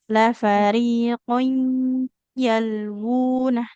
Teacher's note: Jadi ditahannya agak lebih lama ya karena idgham bigunah.